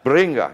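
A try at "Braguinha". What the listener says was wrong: She goes, you're still not pronouncing it right. There's almost like a more of a roll of the R's, and there's 2 G's in it.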